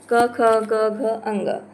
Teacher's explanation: उच्चारण स्थान के आधार पर है कंठ से